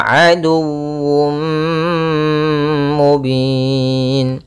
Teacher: tanwinnya dimasukkan ke huruf mim Tapi masih menyisakan suara sedikit daripada huruf tanwinnya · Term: Idgham bhunah